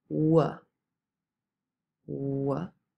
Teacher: you're using your lips and you're also moving the back of your tongue towards the velum so what has two places of articulation labial and velar we · also moving the back of your tongue towards the velum so what has two places of articulation labial and velar we call it a labial velar consonant